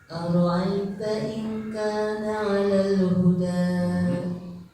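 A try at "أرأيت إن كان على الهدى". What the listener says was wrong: A-nya harus bulat. Ara'aita in gitu.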